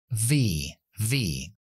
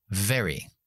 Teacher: misma articulación labio dental dientes de arriba en los en el labio de abajo y soplamos pero con voz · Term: la v